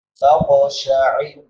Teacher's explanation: قاف موٹے حروف میں سے اور حروف قلقلہ میں سے، یہاں پہ قلقلہ بھی کریں گے